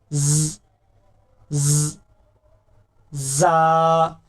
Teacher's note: जा को जब अदा करते हैं ना तो सीटी जैसी आवाज निकलती है।